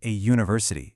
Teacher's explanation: It sounds like it starts with a y, which is a consonant sound.